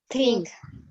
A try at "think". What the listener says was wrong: Okay, not ting tapi kayak Enggak di belakang, di depan.